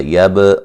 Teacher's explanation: یب با پہ قلقلہ کریں گے